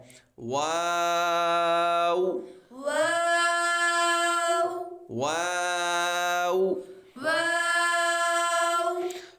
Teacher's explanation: [संगीत] नून वा वा वाव को लंबा भी करना है और वाव पे आपके होठ भी गोल होंगे क्योंकि वा यह दोनों होठों की गोलाई से अदा होता है